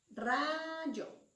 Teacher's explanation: Es la sílaba ra. Ra es la sílaba tónica. Pero la rima la vamos a contar de la vocal de la sílaba tónica en adelante.